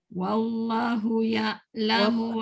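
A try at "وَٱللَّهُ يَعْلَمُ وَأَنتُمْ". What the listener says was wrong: Kalimah Allah tak boleh pendek. Wallahu ya'lamu wa antum. Hu pendek. Wallahu panjang Dia masih ada macam suara berlebih. Wallahu tak mau. Wallahu satu harakat je hu tu. Hu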